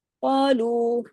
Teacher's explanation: قالو قاف ہیوی، لو باریک